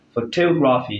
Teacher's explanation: the word photography is stressed third syllable from the end of the word